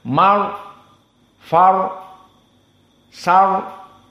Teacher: maka dibedakan ro asakinah jika sebelumnya fathah dibaca dalam keadaan tafkhim